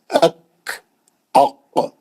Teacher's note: کاف کو اس کے آگے آ کے کاف پڑھیں